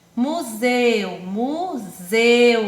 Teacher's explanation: o E e o U ficaram juntinhos em uma mesma sílaba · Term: Ditongo